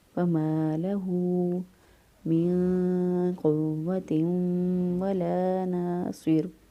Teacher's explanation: ہا پیش واو ہو یا ہا الٹا پیش ہو، اس کو بھی ایک الف کے برابر لمبا کرتے ہیں